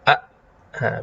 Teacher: ya yang memiliki fungsi yang sangat penting ya jadi Hamzah tadi ketika Hamzah itu sukun ya maka dia menutup sipita suara